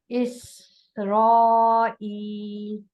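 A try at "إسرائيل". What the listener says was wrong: Okay, بیچ میں گیپ نہیں کریں، دوبارہ سے ایک ہی ورڈ بنا کے پڑھیں.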